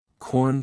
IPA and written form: kɔrn (Corn)